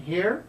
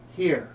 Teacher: So the voice goes up for a question, here, and down for a statement, here.